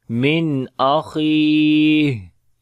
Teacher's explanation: After the nun sakin there is hamza, we make izhar here. Kha we read in heavy sound and also we long due to yamadda